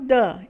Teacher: é uma consoante oclusiva alveolar vozeada